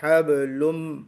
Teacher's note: वो तनवीन या नून की जो आवाज है वो मर्ज हो जाती है, किस में मर्ज हो जाती है, आगे वाले हर्फ में, यानी मीम में। तो हबलुन की बजाय हबलुम पढ़ेंगे, हबलुम। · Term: इदगाम